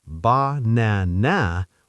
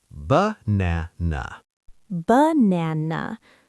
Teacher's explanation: Yes, only the middle A is strong. The others become lazy schwas.